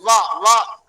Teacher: वकार का भी दो उत्पत्ति स्थान है क्या क्या है दंत और ओष्ठ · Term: वकारस दंतोष्ठम